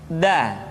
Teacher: diucapkan dengan menyentuhkan ujung lidah kita dengan bagian gusi